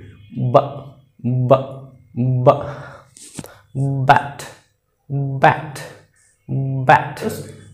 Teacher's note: আর ওইদিকে এই বা সাউন্ড কিন্তু এখান থেকে আসবে, বা বা বা, ব্যাট ব্যাট ব্যাট। তোমরা তোমাদের গলার এখানে তোমরা আঙ্গুলটি রাখো তখন দেখবে এই বা উচ্চারণ করতে এখানে ভাইব্রেট হচ্ছে